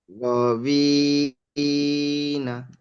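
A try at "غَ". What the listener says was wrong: গটি টান দেন।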